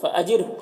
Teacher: را ساکنہ سے پہلے جیم کے نیچے زیر ہے تو را کو باریک پڑھیں گے